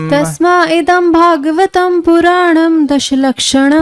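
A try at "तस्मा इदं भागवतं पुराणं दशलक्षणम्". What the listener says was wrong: तस्मै होना चाहिए ना, तस्मैदं भागवतं पुराणं 10 लक्षणं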